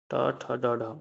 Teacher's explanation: जो मूर्धन्य ध्वनि है हिंदी में वो हमारी ट वर्ग है।